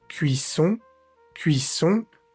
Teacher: No vamos a decir la O separada de la n, no es cuisón, sino cuisón. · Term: vocal nasal